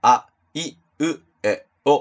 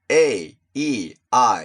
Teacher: 日本語の母音は、あ、い、う、え、おって超短いですよね。一方で英語の母音は、a,e,iって長いですよね 。まず母音の長さが違うんだから、同じリズムは、普通に考えて絶対不可能なんですよ。四分音符で曲を作る場合と八分音符で曲を作る場合、リズムが同じになるわけはないですよね。そういうことです。他にも色々あるんですけど、一番わかりやすいのは母音の長さとリズムの関係かなと思